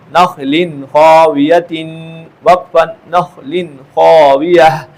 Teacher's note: تنوین ہے اور اس کے بعد خا ہے تو لہذا اس میں غنہ نہیں ہوگا